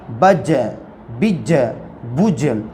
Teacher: زبان کا بیچ اور اوپر کے تالو کو لگنے سے جیم ادا ہوتا ہے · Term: قلقلہ